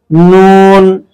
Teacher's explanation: জিহ্বার আগা তার বরাবর উপরের তালুর সঙ্গে লাগিয়ে উচ্চারণ করতে হয় নুন।